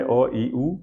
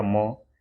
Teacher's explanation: मुंह से बोलने वाले अ ई उ, और नाक से बोलने वाला हो गया म।